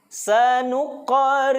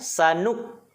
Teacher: Sanuqa, memantul, qaf yang sukun. Sanuqqa, bukan sanuk.